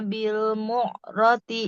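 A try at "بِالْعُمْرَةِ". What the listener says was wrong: Bil mu'rati apa bil umroti? Ain dulu. Ain dulu baru mim ya. umroti Bu. Iya, jangan bil mu'roti.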